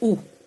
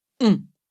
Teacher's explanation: La langue se recule et le voile du palais, le vélum, s'abaisse, ce qui fait passer une partie de l'air par le nez, tandis que le reste continue de passer par la bouche. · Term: la nasale ON